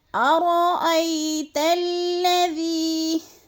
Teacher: تا کو جب لام مشدد کے ساتھ ملانا ہے ہم نے، تو اس کو ہم نے سختی کے ساتھ پڑھنا ہے